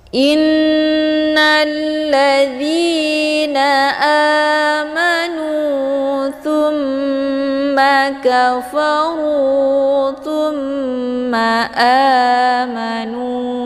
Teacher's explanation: Cara bacanya, hamzahnya langsung dimasukkan ke dalam huruf nun dengan cara ditekan. Hukum bacaan gunnah musyaddadah ini adalah didengungkan. Thumma, huruf tha ini langsung dimasukkan ke dalam huruf mim dengan cara ditekan dan ditahan lebih kurang 2 kali ketukan.